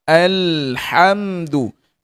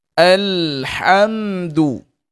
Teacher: Mengalir sedikit bunyi lam mati dan huruf lam merupakan huruf yang nipis. Bunyi dia al. · makhraj bagi huruf lam ni hujung tepi lidah kena pada gusi depan dia duk di situ sekejap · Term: lam sukun